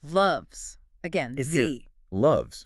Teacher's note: So there's vibration before the S. The S keeps vibrating, becoming a Z. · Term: buzzing Z sound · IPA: /z/